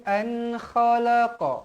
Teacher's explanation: Nun bertemu huruf Kha sama juga izhar halq dibaca jelas dan terang